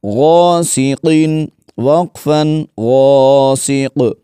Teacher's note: غین الف زبر غا، سین زیر سی، غاسی، قاف دو زیر قن، غاسقین وقفا غاسق. غین کو بھی موٹا پڑھیں گے اور قاف کو بھی، کیونکہ یہ حروف مستعلیہ میں سے ہے